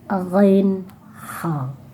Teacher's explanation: Lalu ujung tenggorokan itu adalah ghain